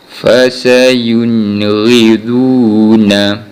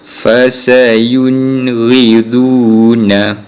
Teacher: kita akan baca dengan jelas tanpa dengung untuk huruf nun yang bertanda sukun ini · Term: izhar khalqi